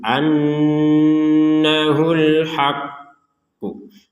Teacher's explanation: Ditekan dulu annahul haqqu. Setelah ditekan baru mengucapkan pantulan dari huruf qaf. Jadi tasydid di atasnya qaf ini harus kita perhatikan juga. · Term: qalqalah kubro